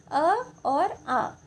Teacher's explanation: अ और आ का उच्चारण जो है वो कंठ से होता है